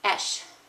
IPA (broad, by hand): eʃ